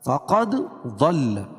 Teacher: بالایمان یا مدہ، مان الف مدہ. فقد ضل، دال پر قلقلہ، ضاد کو پر پڑھیں گے